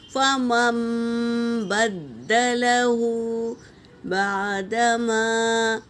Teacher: نون ساکن کی آواز کو میم سے بدلنا ہے